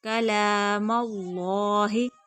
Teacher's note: اللہ کا لام پور موٹا کر کے پڑھا جائے گا